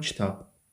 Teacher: Kitab sözündə bir incə, bir qalın sayt iştirak edib.